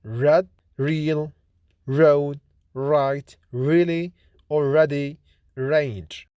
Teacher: R is voiced post alveolar approximant consonant